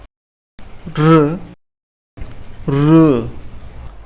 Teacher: जो जीभ है वो मूर्धन्य भाग, जो दांत और तालव्य के बीच का भाग है, उसे स्पर्श करती है इनकी ध्वनि उत्पन्न करने के लिए।